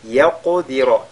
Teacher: la lettre qaf lu avec al-qalqala, le ra avec al-tafkhim